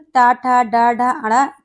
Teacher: ट, ठ, ड, ढ, ण तो इनका उच्चारण स्थान क्या है? तो मूर्धा होता है